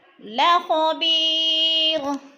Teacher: اور بی پہ یا مدہ یا ساکن سے پہلے با کے نیچے زیر ہے تو یہ مدہ ایک الف کے برابر کھینچ کر پڑھنا ہے